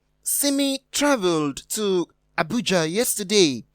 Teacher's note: abuja is the emphatic word